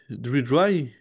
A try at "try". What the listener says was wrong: C'est pas dry. C'est pas dry. Là, t'as une lettre qui est pas bonne. La première lettre est pas bonne.